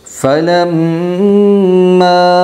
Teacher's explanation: فلم کے اندر مد جو ہے تو میم مشدد کا غنہ ہوگا، اور میم مشدد کے غنے کو 1 الف کی مقدار ناک میں چھپا کر پڑے گی